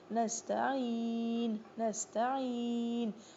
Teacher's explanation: نستا، نستعین، نستعین، نستعین، ناک میں آواز این نہیں جانی چاہیے اور یہاں پہ حمزہ نہیں، عین پڑھیں گے